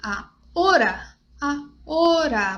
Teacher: Esse hora é muito, muito aberto no português.